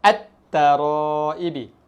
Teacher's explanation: Hilangkan sebutan lam ataupun lam tidak dibaca.